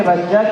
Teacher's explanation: دو زبر پر وقف کرنا ہو تو ایک زبر کے ساتھ الف پڑھا جاتا ہے